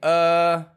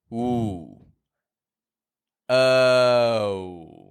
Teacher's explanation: it's a w Glide vowel you may recall it starts with a sound like uh and then we bring the corners of your lips in